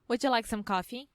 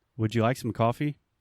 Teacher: we just raise our intonation a little bit at the end of a question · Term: rising intonation